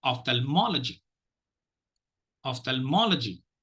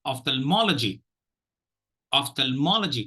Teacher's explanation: the first and the third syllable should receive the stress two four and five will not be given the stress